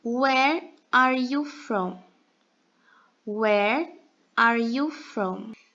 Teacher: Esse where, a gente vai pronunciar ele como se fosse o E da língua portuguesa, adicionando um R com sotaque mineiro.